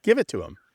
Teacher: especially American English, we don't always pronounce the H when it's at the beginning of a word.